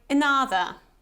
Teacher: the sound at the beginning is called schwa in English and it's this kind of Silent Sound so it's not really audible it's like another so you can't really hear this sound at